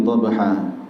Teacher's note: Dhabha di situ ada qalqalah sughra, maka pantulannya kecil saja, tidak perlu pantulan yang besar.